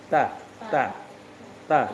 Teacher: ujung lidah ke gigi atas yang bagian dalamnya